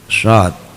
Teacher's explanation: Kalau shot itu bibir ke depan, mencucu.